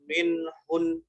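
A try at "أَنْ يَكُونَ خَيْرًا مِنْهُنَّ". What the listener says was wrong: Ini kalau meskipun dia di akhir, nun tasdid itu tetap ditahan. Ditahan ya segitulah. Meskipun dia di akhir. Nggak peduli di tengah atau di akhir. Tetap. Minhun itu meskipun dia di akhir ya, tetapi tetap ditahan. Seukuran gitu aja. Khairam minhun.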